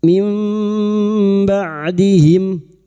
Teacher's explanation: Membalik seperti bertemu mim namun siap membunyikan huruf ba namanya bacaan iqlab dan kita dengungkan selama tiga harakat.